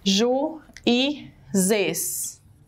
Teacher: eu escuto o U bem forte, Ju, ele é forte, ele não é fraquinho, e a gente também escuta o som do I. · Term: hiato